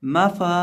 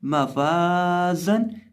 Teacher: निचले होंठ का वस्त जब सामने वाले ऊपर के 2 दांतों के किनारे से लगता है तो फा अदा होता है